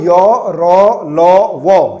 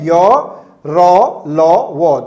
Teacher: ये जो हैं आपके अंतस्थ व्यंजन कहलाते हैं। जिसमें य और व तो आपका अर्ध स्वर कहलाता है। र जो है वो लुंठित कहलाता है और ल जो है वो आपका पार्श्विक व्यंजन